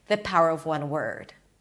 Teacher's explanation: word is stressed but it's stressed by prolonging it maybe putting a little bit of emphasis there and slightly higher in pitch